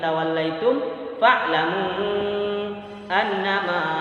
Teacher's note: Ma-nya dibaca panjang 2 harokat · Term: mad tabi'i alif